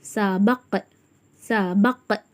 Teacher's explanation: கல்கலாவின் எழுத்து 2 முறைகள் அசைச்சி அந்த இக் சவுண்டோட ஓதணும்